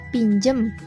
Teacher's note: penggantian fonem A menjadi E pada pengucapan pinjem yang seharusnya menjadi pinjam